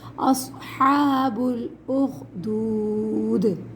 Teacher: صاد کو موٹا پڑھیں گے، اگر ہم نے باریک پڑھا تو سین کی آواز بن جائے گی